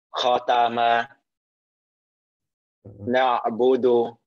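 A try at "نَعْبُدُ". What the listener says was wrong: Tadi kalau ini hati-hati juga domah itu kadang nyampur sama kayak o ya. Na'bodo budu. Nah jadi domah itu mesti lebih sempurna monyong ya atau sempurna u. Jadi u-nya bunyi sempurna ya. Kalau tadi antum tambahan baru berarti ini domah bercampur dengan huruf O.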